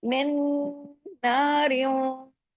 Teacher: वो डबल नून अपना एक अंदर वाला नून मीम से जुड़ रहा है, क्योंकि बीच में तो नून के पास हरकत नहीं है ना। मिन, और नून पे तशदीद होने की वजह से बड़ा गुन्ना भी होगा।